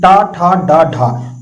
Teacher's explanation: अब बोल करके फिर से देखिए, टा, ठा, डा, ढा, तो आपकी जीभ जो है वो मूर्धा से टकरा रही है, इसलिए टा वर्ग को मूर्धन्य कहते हैं